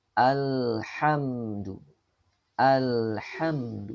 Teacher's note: ada penahanan sejenak pada huruf lam dan mim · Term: sifat tawasuth